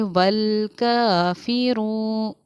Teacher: रा वाव पेश रू, वाव हुरूफ़ मद्दा है इसलिए कि वाव साकिन से पहले पेश है, इसको थोड़ा खींचकर पढ़ना चाहिए